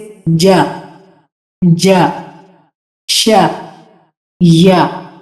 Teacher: اور یہ کیسے ادا ہوتے ہیں کہ جب زبان کا درمیان اور اوپر والے تالو کا درمیان، زبان کا درمیان اوپر والے تالو کی طرف اٹھتا ہے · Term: زبان کے وسط